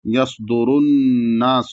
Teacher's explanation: را پر پیش ہے تو را کو موٹا پڑھا جائے گا۔ یصدر الناس، نون پہ تشدید ہے اس لیے یہاں غنہ ہوگا، اور یہاں پر سین کو کھینچا نہیں جائے گا بلکہ جلدی پڑھیں گے۔